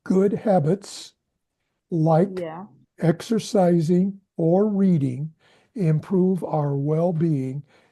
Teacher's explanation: I didn't hear the s sound on habits.